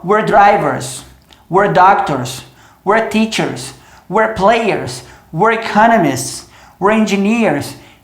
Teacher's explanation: se eu quiser acelerar essa fala, eu ainda consigo. Esse we're vai virar were.